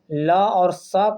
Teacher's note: ल और स का भी उच्चारण स्थान क्या हो जाएगा दंत हो जाएगा